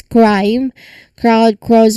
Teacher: remember the K here is produced at the back of the throat. So it's a quick shift from the back to the mouth K. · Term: Kerr cluster